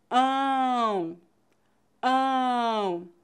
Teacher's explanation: e o para pronunciar de tongos nasais o ar deve Pass passar pela boca e nariz ao mesmo tempo